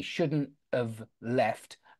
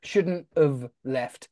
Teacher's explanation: we pronounce that have very often as an of